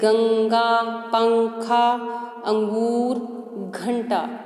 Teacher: अनुस्वार को नाक से बोला जाता है